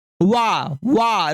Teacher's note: तो वाह का उच्चारण स्थान क्या होता है, दंतोष्ठ होता है।